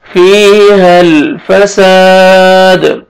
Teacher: الف مدہ ہے، الف سے پہلے زبر ہے، آپ نے سین کو کھینچنا ہے اور دال ساکن قلقلہ کریں گے